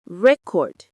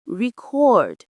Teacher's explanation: if it's a noun, you stress the first syllable, record. But if it's a verb, you stress the second, record.